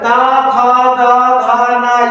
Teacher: ये हमारे दंत अर्थात दांतों से बोला जाता है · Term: ता वर्ग, त वर्ग